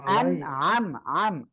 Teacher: আইনটা গলাটা চেপে পড়তে হবে।